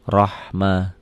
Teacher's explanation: Lafaz Allahnya dibaca tebal karena barisnya di atas.